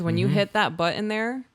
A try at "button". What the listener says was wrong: when you hit that button, I know you said butt in, but button, when you hit that button there,